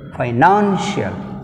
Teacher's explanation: take stress on the second syllable from the end, stress mark on the N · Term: పెనల్టిమేట్ సిలబుల్